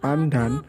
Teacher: dalam kata pandan nasal sebelum D diucapkan secara apiko-palatal N. Perubahan nasal apiko-alveoral N menjadi nasal apiko-palatal N karena pengaruh secara regresif dari bunyi letuk palatal D.